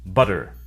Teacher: In the US, they sometimes sound like D, an alveolar tap instead of T, an alveolar stop. This normally occurs in an unstressed syllable between two vowel sounds, or between a vowel and a rhotic sound, like an R sound.